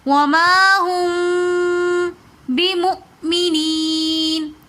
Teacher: ہم میم ساکن کے بعد با آ رہی ہے تو اس لیے ہم یہاں پر غنہ کر کے پڑھیں گے. وما ہم بمؤمنین. · واو کے اوپر حمزہ لکھا ہوا ہے تو اس لیے ہم حمزہ کو تھوڑے سے جھٹکا دے کر پڑھیں گے کیونکہ حمزہ ساکن حالت میں ہے.